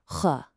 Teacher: This one is a raspy sound, like you're gently clearing your throat. It's got a little bit of a gargle to it.